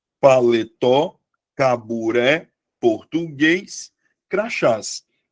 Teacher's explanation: todas as palavras tenham como sílaba tônica a última sílaba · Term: oxítona